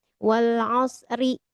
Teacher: kalau kita bacanya disambung ya, misalkan digabungin dari ayat 1 sampai 2 atau sampai 3 wal asri, ri-nya tipis, tarkik ya